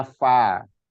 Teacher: cenderungnya kita di Jawa Barat fa itu agak jadi pa itu di mana-mana. Fa itu jadi pa gitu kan.